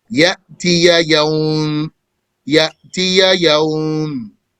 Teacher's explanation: Ya is coming from the middle of the tongue.